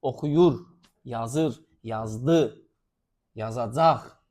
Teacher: Zaman şəkilçiləri vurğu qəbul edir.